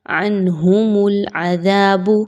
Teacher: یعنی نون کی آواز کو بڑا کلیئر پڑھنا ہے اور غننے کے بغیر پڑھنا ہے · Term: اظہار